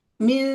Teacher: Nah, masih ada nun. Jangan ditarik ke eng